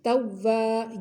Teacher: واو الف زبر وا، مد اصلی ہے لمبا کریں گے